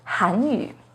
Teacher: has a second rising tone on han